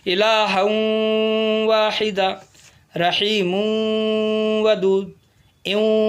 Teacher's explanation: تنوین یا نون ساکن کے بعد تشدید والی واو آئے تو تنوین یا نون ساکن کو تشدید والی واو میں ملا کر غنہ کے ساتھ پڑھیں گے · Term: ادغام واو